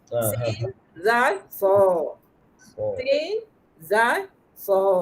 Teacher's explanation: Bila so tu pangkal lidah menaik. Bila sin pangkal lidah lebar. Zai pun lidah tak menegang.